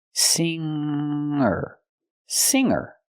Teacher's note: I cannot pronounce the word singer. I cannot pronounce the g sound, the hard g in this word. I have to use a nasal sound.